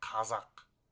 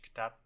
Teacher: K is deeper from the throat. Kazakh. And K is lighter, like in English kitap, book.